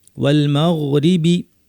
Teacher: ওয়াল গয়নের আওয়াজটাকে একটু জারি রাখতে হবে।